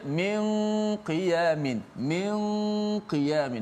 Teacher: Nun bertemu dengan qaf, ada ikhfa dengung di situ.